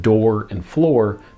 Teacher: the beginning sounds differ (d and fl) but the final sounds match (oor), creating the rhyme